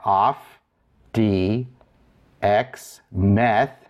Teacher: Notice that the tau becomes a theta, it took the H sound.